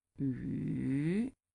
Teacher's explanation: And the third one is like 语, is falling, rising. 语. So you can feel that it's down to your throat.